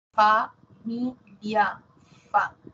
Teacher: Tenemos también sonidos labiodental un sonido labiodental uno nada más que es la f · Labiodental, labio inferior, dientes superiores.